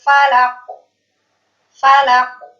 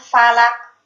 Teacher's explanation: ketika huruf qaf ini berharokat sukun, maka huruf qaf ini memiliki sifat qalqalah atau mantul